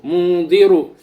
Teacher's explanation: را کے اوپر پیش آیا ہوا ہے اس لیے را کو پر پڑھا جائے گا